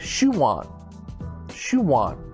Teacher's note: his shoe on shuwan so it sounds like a different word it's two words combined spoke in a natural way sounds like we're adding a w